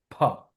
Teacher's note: উচ্চারণ হবে দুই ঠোঁট দিয়ে